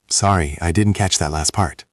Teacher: Notice the intonation. It goes down slightly at the end.